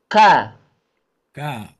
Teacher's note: huruf K ini makhrajnya masih dari pangkal lidah. Sama dengan huruf Qaf.